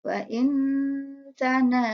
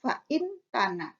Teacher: Nah, maka bunyi nun sukunnya dibaca samar atau ringan. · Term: ikhfa hakiki